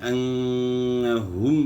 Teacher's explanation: میم ساکن میں اظہار ہوگا، غنہ نہیں ہوگا، کیونکہ میم ساکن کے بعد نہ با ہے اور نہ دوسرا میم ہے.